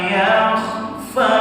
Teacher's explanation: ketika pada yakh ada ngoroknya, tapi tidak boleh terlalu kasar, dan posisikan ruang mulut seperti penuh dengan makanan.